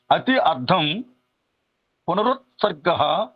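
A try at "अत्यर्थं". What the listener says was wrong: ఇది అత్యర్థం అతి అర్థం అన్నారు, అతి అర్థం అది అత్యర్థం. ఇక్కడ ఆ దీర్ఘం ఉండాలి.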